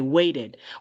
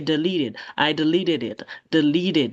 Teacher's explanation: when t is in the middle of two vowels, it sounds like duh